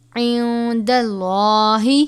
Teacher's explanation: لام سے پہلے زبر ہے تو لام کو پر پڑھیں گے